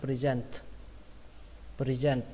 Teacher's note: Từ tiếp theo các bạn đọc là present, ở đây trọng âm của nó rơi vào âm thứ hai các bạn nhé, present, và kết thúc bằng âm t bắn hơi